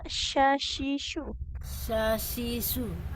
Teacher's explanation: huruf syinya dia kan makhrajnya di tengah lidah menempel ke langit-langit atas ya.